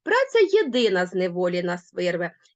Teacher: Я вважаю що тут логічний наголос падає на слово єдина